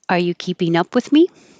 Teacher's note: It's a yes no question. So it goes up, up, up.